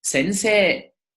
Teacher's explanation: Like in the word sensei. Whenever you have a kana that ends in the sound e, like se, me, ne, he, and so on and so forth, and it's followed by e, you prolong the e sound.